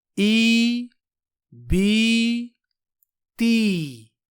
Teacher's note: مجہول یعنی اس طرح پڑھنا اے بے تے، تو یا مد کو اے بے تے پڑھنا غلط ہے، کیونکہ عربی زبان میں یا مد ہمیشہ معروف پڑھا جاتا ہے، مجہول نہیں۔ صحیح طریقہ ہے ای بی تی، اور اس طریقہ کو معروف طریقہ کہتے ہیں۔